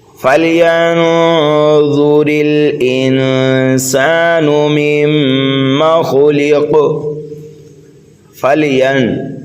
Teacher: فَلْيَنظُرِ الْإِنسَانُ مِمَّا خُلِقَ، فَلْيَن، یا کو نون میں ملائیں گے اور نون ساکن کے بعد میں حرف ضا حروف اقفا میں سے آ رہا ہے، اس لیے یہاں پر اقفا کریں گے۔